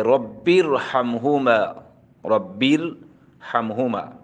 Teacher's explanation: را ساکینہ سے پہلے کسرہ دوسرے کلمے میں ہو تو باوجود کسرہ کے را پر پڑھی جائے گی